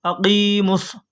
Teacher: صاد کے اوپر تشدید ہے تو یہ میم صاد میں ملے گا